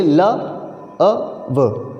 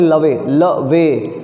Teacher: व के बाद देखो ई लिखा हुआ है, लेकिन ई का प्रोनाउंसिएशन नहीं हो रहा है। अगर इसको लवे पढ़ें, लवे लवे, तो 2 सिलेबल्स होंगे, बट यहाँ पर ई का प्रोनाउंसिएशन नहीं हो रहा, हो ही नहीं रहा।